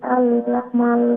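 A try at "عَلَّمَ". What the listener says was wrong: হ্যাঁ, আল্লামা লেটা আইন কোন জায়গা থেকে উচ্চারণ হয়? মিডল থ্রোট থেকে। হ্যাঁ, তো এটা আরেকটু এখন যদি আল্লামা বলি তো ওই যে হামজা উচ্চারণ এসে যাচ্ছে, যেটা হচ্ছে গিয়ে এই যে বটম থ্রোট থেকে, তো ওইটা গলার মধ্য অংশ থেকে যাতে আইন শোনা যায় সেই চেষ্টা করবেন।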